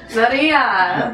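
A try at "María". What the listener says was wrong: No, you gotta roll the R's. Because she's actually she was made in Spain.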